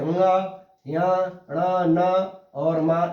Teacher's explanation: इनका उच्चारण स्थान नासिका से है, तो ये नासिक के वर्ण हो गए